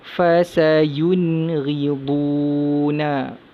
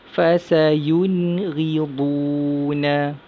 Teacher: Seterusnya, nun mati bertemu huruf ghain dalam satu kalimah. Jadi nun mati tu kita baca dengan jelas, nyata dan terang, baca dengan izhar halki.